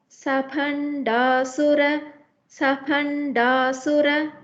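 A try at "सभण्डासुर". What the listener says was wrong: Ma'am, it is not pa, bha it is. So Bhandasura.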